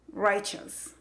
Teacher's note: La segunda sílaba no tiene estrés, entonces se pronuncia con el sonido schwa